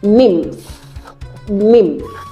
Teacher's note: Then M as a syllabic nasal is pronounced as M is a nasal sound. It comes out from the nose and you have it in the English word nymph.